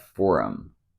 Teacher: he dropped the H sound and said for him this happens a lot you'll notice this